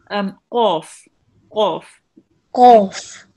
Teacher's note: It will be pronounced from the middle of your throat, and it's a thick letter. It has a heavy sound. It will be read with your mouth rounded a bit again